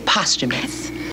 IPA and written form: ˈpɑːs.tʃə.məs (Posthumous)